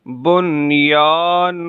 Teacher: اس میں ادغام اور غنہ نہیں ہوگا بلکہ اظہار مطلق ہوگا